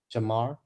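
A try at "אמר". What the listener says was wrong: Aleph is silent. You don't have to make no sound. Silent. You only make the sound of the vowel underneath it. Because remember, Alephs are silent except if it has a vowel underneath it.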